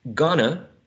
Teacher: in gonna, right, and going to, we may see that the u was reduced to a schwa, right? We may see that the diphthong o was reduced to a monophthong.